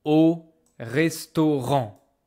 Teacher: I don't hear N. I don't hear T. Okay? The AN, they make this single nose vowel